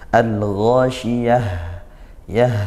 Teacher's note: diakhiri dengan tak marbutah yang kalau kita waqaf maka menjadi huruf ha sukun. Al-Ghasyiyah ya, seperti itu ya, jadi ha.